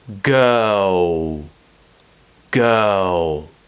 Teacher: we're creating a round shape almost like a what sound and the tongue is going up and curling back a little bit